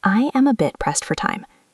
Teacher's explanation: It flows together. The words bit and pressed are the ones we emphasize.